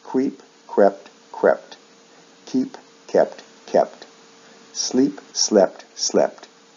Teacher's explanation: shift vowel sounds in the past and past participle usually from long e to short e similar to the ones we just did the difference is with